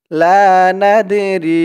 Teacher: নাদে দালটা কলকলার হরফ ধাক্কা দিয়ে পড়তে হবে